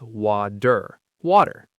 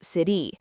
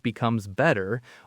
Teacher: It's not a full heavy d sound, but a light quick tap of the tongue. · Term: American flap tea